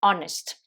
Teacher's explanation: c'est un des rares mots où le H n'est pas prononcé. Hein, vous savez qu'en général, le H se prononce dans quasiment tous les mots en anglais, mais celui-là, ça fait partie des exceptions.